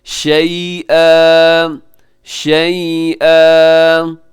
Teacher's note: شَيْئًا 2 زبر پہ جب وقف کرتے ہیں تو اس کو ایک الف کی طرح پڑھتے ہیں، الف مدہ کی طرح. آپ اس کو تھوڑا سا کھینچ کے وقف کریں گے.